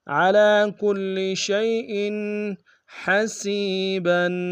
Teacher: حمزہ کے نیچے تنوین غنہ کریں گے۔ علی کل شیء حسیبا، حسیبا میں سین کو یا کے سامنے گے، یا مدہ ایک انداز میں کھینچیں گے، با کے اوپر تنوین غنہ کریں گے۔